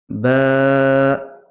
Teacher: ঠোঁটের ভিজা অংশ অংশ লাগিয়ে দিন লাগিয়ে দেওয়ার পরে উচ্চারণ করুন বা একটু টান দিবেন এক আলিফ মত টান দিবেন